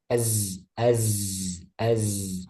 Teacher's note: Zai sama dengan Sod dan Sin ya. Dia ada desisan